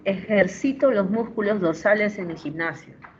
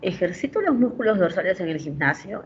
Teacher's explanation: y el par mínimo tiene una entonación ascendente